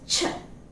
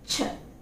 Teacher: the vocal cords are held apart. So the airflow is moving freely from the lungs through the mouth and producing the sound ch. Okay, അപ്പോൾ അതൊരു voiceless consonant ആണ്.